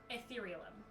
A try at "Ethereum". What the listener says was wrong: Ethereum? You added like 3 extra syllables to that.